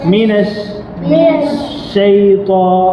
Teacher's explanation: இந்த துவா வந்து நாக்குடைய நுனி வந்து உள்ள இந்த மேல் பல்லுல படும். மேல் பல்ல உள்ள.